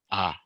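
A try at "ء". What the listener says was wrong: No. Don't stress it. Now, you want to pronounce it with the ha.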